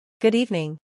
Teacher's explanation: Evening acentuación en la segunda sílaba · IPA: gʊd ˈiːvnɪŋ